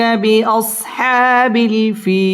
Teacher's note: বিল ফিল জেরের বাম পাশে জজম আলাইয়া মদের হরফ, মদের হরফের বামের হরফে ওয়াকফ মধ্যে আরজি তিন আলিফ টান দিয়ে ওয়াকফ করতে হবে।